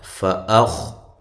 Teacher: تو اس کے بعد یہ نون تنوین کا اخفا ہے۔ فأخ، حمزہ کو تحقیق کے ساتھ، خا کو موٹا، ہلانا نہیں ہے